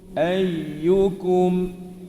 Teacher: Ayyukum. Semasa sebut ayyu itu, tengah lidah kita melengkung naik ke langit gitu. Tapi tak sentuh. Dia cuma naik.